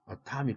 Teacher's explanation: atomic 하면 에가 어로 슈아 사운드로 바뀌었다는 사실